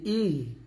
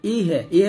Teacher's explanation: ইহ দি ইহেদি এটা কিন্তু না এখানে বলতে হবে ইহ হামজা হা জের ইহ বাতাস বের হবে ইহে ইহে বললে কিন্তু হাটা কলকলা হয়ে যাবে তো এটা করা